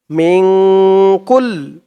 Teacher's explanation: নুন সাকিনের পরে ইকফার 15 হরফের এক হরফ কাফ আসছে তাই এখানে ইকফা নাকের ভিতরে লুকিয়ে গুন্না করে পড়তে হবে